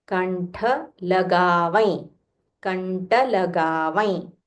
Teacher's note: The ta is Mahaprana, so you'll have to say Kantha.